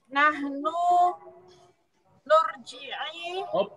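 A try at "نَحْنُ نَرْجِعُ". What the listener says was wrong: Jangan nur. Kalau yang nur itu 4 huruf fi'il madinya. Ini roja'a masih 3 huruf. Nahnu.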